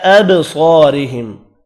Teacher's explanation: را کو باریک پڑھنا ہے زیر کی وجہ سے